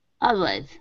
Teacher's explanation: Now here you were saying ul, always. Instead of ul, it's ah, all, always with an ah sound.